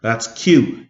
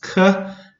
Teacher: q said in the back of the throat um similar um it's it's similar to the k sound but it's just pronounced in the back of the throat so k is k q is that's q it said in